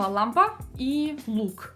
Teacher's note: Когда я произношу русское слово лампа, то кончик моего языка уходит достаточно низко и как бы вот даже чуть ли не касается зубов. И при этом он, внимание, лежит на небе.